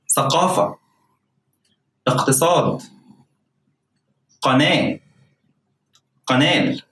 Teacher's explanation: But just like gim, there are a few exceptions where you have to pronounce the qaf as it is, qa sound, a hard K sound. K sound that is pronounced further back from the throat